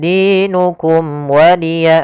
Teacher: ada mim mati bertemu dengan huruf waw, maka suara mimnya harus dibaca dengan jelas, tidak boleh tahan karena dia bertemu dengan huruf waw. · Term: izhar syafawi